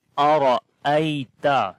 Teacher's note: ta is light letter, so we read light sound, and also we do not long here